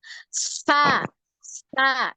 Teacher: Nah, di lidahnya di ujung gigi seri atas nempel ya. Ujung lidahnya nempel di ujung gigi seri. Sa, gitu. Coba lagi.